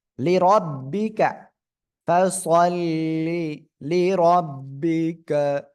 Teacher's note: রর উপরে জবর মোটা আওয়াজে পড়বেন